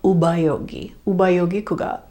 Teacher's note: I know you see a P here, but when it's in the middle of the word, it becomes more like a ba